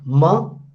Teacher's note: Ma is labial because two lips they touch each other.